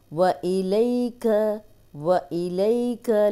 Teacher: जज़म वाली या, पीछे ज़बर, लंबा नहीं करेंगे, नरमी से पढ़ेंगे।